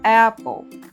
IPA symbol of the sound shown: æ